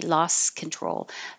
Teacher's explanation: you don't need to stop for that t you can just go from the s to the K